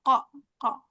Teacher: terlalu masuk ke tenggorokan qofnya ini pangkal lidahnya qo dekat kaf